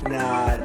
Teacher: when British speakers say this vowel their lips might be slightly rounded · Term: lot vowel